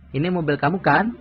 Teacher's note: when we are not sure and want to check information, the intonation in the question tag goes up.